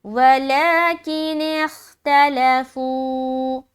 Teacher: تا زبر تا، لام زبر لا، تلا جلدی ادا، فا واو پیش فو. یہاں پر ایک الف کھینچ رہے کیونکہ یہ واو مدہ کا قاعدہ بن رہا ہے